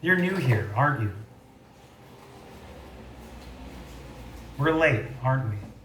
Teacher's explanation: listen to these examples of tag questions with falling intonation